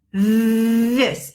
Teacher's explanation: we're gonna buzz it so we are using our vocal cords